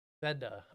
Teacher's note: Closes the first syllable and the final E sounds like a short schwa